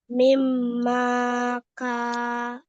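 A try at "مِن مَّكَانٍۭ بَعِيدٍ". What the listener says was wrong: mimnya nggak panjang. Mim, mim makanim ba'id. Makanim. Ini harakatnya bukan kasroh, tapi kasrotain ya. Maaf, nggak kelihatan ini kasrotainnya.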